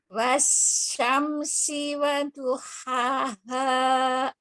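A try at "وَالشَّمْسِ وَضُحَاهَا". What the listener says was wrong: Udah bagus sekarang, tapi wasyamsi, sinya ada shinnya, ada sifat tafasyinya.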